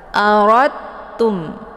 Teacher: ro-nya langsung masuk ataupun dileburkan ke dalam huruf ta dan masuknya adalah kamil tanpa tersisa daripada makhraj dal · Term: idgham mutajanisen